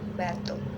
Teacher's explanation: bunyi B pada kata batu dihasilkan melalui kedua bibir yang dirapatkan, kemudian dilepaskan hingga udaranya keluar